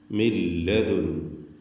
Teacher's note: മിൻ എന്നതിലെ സാക്കിനത്തായ നൂൻ ശേഷം ലാമ് വന്നതുകൊണ്ട് പൂർണ്ണമായും ലാമിലേക്ക് അതിനെ ലയിപ്പിച്ച് മണിക്കാതെ ഉച്ചരിക്കണം. മില്ലദുൻ, ലദുൻ.